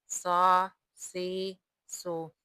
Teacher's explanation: صاد حروف مستعلیہ میں شامل ہے، صاد کا مخرج زبان کی نوک اور ثنایا علیہ اور ثنایا سفلی کے کنارے ہے